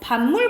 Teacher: 반물 보면은 비읍이 미음이랑 똑같아졌죠. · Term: 완전동화